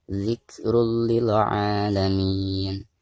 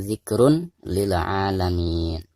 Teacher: suara tanwin yang di atas ro ini itu harus dimasukkan langsung ke huruf lam ya, diidghamkan ke huruf lam ya. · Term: idgham bila guna